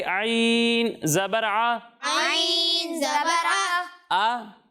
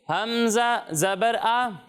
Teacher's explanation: عین کو جو ہے وہ ہم حلق کے درمیان والے حصے سے پڑھتے ہیں اور حمزہ کو حلق کے نیچے والے حصے سے پڑھتے ہیں، یعنی اسے پڑھیں گے حمزہ زبر آ، اور اگر عین پر زبر ہو تو اسے پڑھیں گے عین زبر آ، آ۔